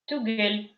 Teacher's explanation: В татарском языке в конце, если «л» приходит с мягкими гласными, такими как «и», «е», там, да, то она слышится как мягкая. И в конце как будто бы слышится мягкий знак, но он не пишется.